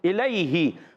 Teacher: الیہ، حمزہ کو خوب واضح کریں گے، اور الیہ یا لین، یا ساکن سے پہلے زبر، یا لین ہے، نرمی سے ادا کریں گے بغیر کھینچے، ہاکن کی زیر ہے، حرکت ہے، نہیں کھینچیں گے۔